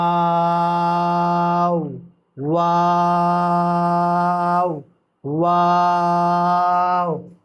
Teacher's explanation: اسی طرح ہمارا واو میں ہارڈ گول ہوگا، کس طرح؟ پہلے گول ہو کے پھر کھل جائے گا، پھر گول ہو جائے گا